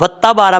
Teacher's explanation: अगर आप वत्ता बारा पढ़ेंगे तो ता के ऊपर शद पड़ा जाएगा, जो कि गलत है। ता के ऊपर भी ज़बर है, वाव के ऊपर भी ज़बर है, दोनों को सेपरेट करके यानी अलग अलग करके पढ़ना है।